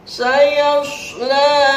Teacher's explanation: Yang terakhir ayat ketiga, hukum tajwid yang terkandungnya adalah sayasla, ada huruf shad. Harus ada suitan ketika mengucap huruf shad. La-nya itu mad tabi'i biasa.